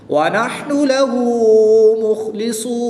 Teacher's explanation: خا اور صاد حروف مستعلیہ میں سے ہے تو ان کو پوری یعنی موٹا پڑھیں گے. وقف کی حالت میں یہاں پر مد عارض ہوگی، 2 سے 3 الف تک کھینچ کر پڑھیں گے